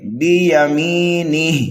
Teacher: تو یہاں پر ہم جب وقف کریں گے تو اس ہا کو ساکن کر دیں گے، بیمینہ، اور اگر ملا کر کے پڑھنے لگے تو اس والے ہا کو ہم کھینچ کر کے پڑھیں گے۔